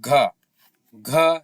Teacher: और घ आप बोल के देखिए, घ इसमें हवा भी ज़्यादा निकल रही है और कंपन भी हो रहा है।